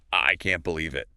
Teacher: I can't believe it. Stress is on can't.